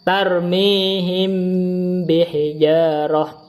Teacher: Wa tukhfa bi gunnatin indal ba'i wa yusamma ikhfa syafawi. Dibaca ikhfa dengan gunnah ketika bertemu dengan ba, disebut ikhfa syafawi.